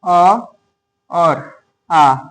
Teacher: अ और आ ये दोनों वर्ण भी कंठ से ही बोले जाते हैं।